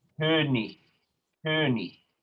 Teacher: a final IG spelling is going to be a Ich laut